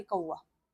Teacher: जब आप बोलते होंगे तो आपको ऐसा लगता कि व की साउंड आ रही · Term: आधा स्वर और आधा व्यंजन